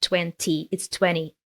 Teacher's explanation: natives usually drop the T sound